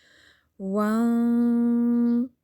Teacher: یعنی نون کی آواز کو ہم ناک میں چھپاتے ہیں، 2 سے 3 حرکات کر لیں، ایک الف کی جتنی حرکت کے جتنا آپ ناک میں آواز ٹھہرائیے، نون کی آواز کو چھپائیے، وان، ٹھیک ہے، اس طرح تو پر پڑھنا ہے تو پھر زبان کی جڑ اٹھا لیتے ہیں۔ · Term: اخوا